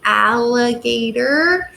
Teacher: you can feel the l the liquid sound is kind of overpowering the a sound